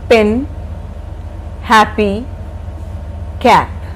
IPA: pɪn ˈhæpi kæp